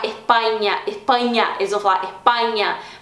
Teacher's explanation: ficar tão longo e você mais específica né mais breve bom a letra a costuma ser mais aberta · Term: som do a aberto